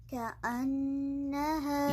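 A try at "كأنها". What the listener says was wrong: یہ حمزہ بہت کلیئر ہونا چاہیے، کأنہا نہیں کہنا. کأنہا، کأنہا.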